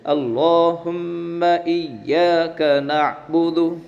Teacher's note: لفظ اللہ کے لام کو پور پڑھیں گے اور میم میں گنہ کریں گے